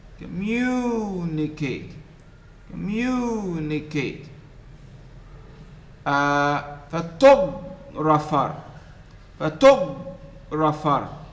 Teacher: The second syllable is stressed. So it is louder and it is longer compared to the other syllables.